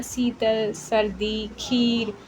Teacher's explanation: ਬਿਹਾਰੀ ਦੇ ਵਿੱਚ ਈ ਦੀ ਆਵਾਜ਼ ਆਉਂਦੀ ਹੈ ਮਤਲਬ ਦੀਰਘ ਥੋੜੀ ਲੰਬੇ ਵਾਲੀ ਧੁਨੀ ਹੋਏਗੀ